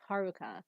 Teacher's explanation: ha, and then the ru is less emphasized, and ka is emphasized again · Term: emphasis